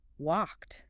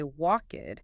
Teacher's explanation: I heard that crisp t at the end. Walked. You didn't say walkid.